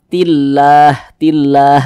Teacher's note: ditipiskan tillah begitu Jadi lafaz Allah pasangannya adalah tanda baca kasrah sehingga lafaz Allahnya itu dibaca tipis dibaca tarkik